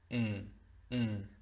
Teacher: La diferencia en la ejecución, en la articulación, solamente fue bajar el velo de la E a la E, de la A a la A. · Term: E nasal